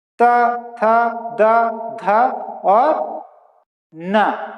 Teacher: द, आप ता से प्रारंभ कीजिए, ता, था, दा, ये जीभ आके ये सामने के दांतों में टकरा रही है अंदर साइड। त, थ, द, ध और न, ये सब बोलने में हमारी जीभ जो है दांतों से टकरा रही है। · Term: दंतव्य